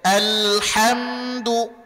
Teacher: Kemudian dalnya dhammah, maka monyongkan kedua bibir, jangan dibaca do.